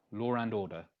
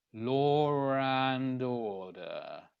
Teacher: You're hearing an extra R. Law and order. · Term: linking sounds